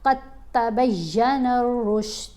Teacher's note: اب یہاں پر دال جو ہے یہ خاموش ہے، قاف کو ہم نے تا سے ملانا ہے